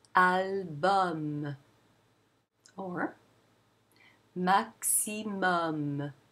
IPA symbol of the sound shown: ɔ